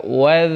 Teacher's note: alirkan suara dalal Jangan dipantulkan karena bukan huruf Qalqalah